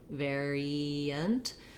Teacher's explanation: And again, we have another schwa. When I move from the E to the schwa, my E shape is a little bit more of a smiling sound, variant. We do end up sometimes with a little bit of a glide there.